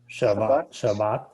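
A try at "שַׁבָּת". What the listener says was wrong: You gotta pronounce those T's on the ends of words. Gotta hear that T. Not Shabbat. Not Shabbat. Shabbat. Pronounce that T.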